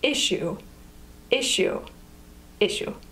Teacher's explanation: issue has two syllables issue with the emphasis on the first syllable